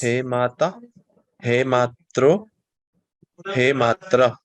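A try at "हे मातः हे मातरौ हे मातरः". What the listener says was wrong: So in Samskrita, we need to pronounce every letter that is written. So He Mataha, even the Visarga needs to be pronounced fully. So He Mataha, He Matarau, He Mataraha.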